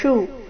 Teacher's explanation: ಶು ಮೂರ್ಧನ್ಯ ಶ್ರ ಉಕಾರದೊಂದಿಗೆ ರಸ್ವ